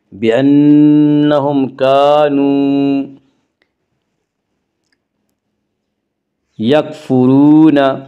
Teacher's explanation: را کو پر پڑھیں گے، را کے اوپر پیش ہے